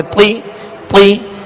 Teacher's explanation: تو کے نیچے زیر ہے, لہذا تو کو پر پڑھیں گے اور آواز کو گھرا کر